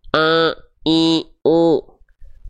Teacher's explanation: Masih ada suara kita yang dia melipir masuk ke rongga hidung. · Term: sengau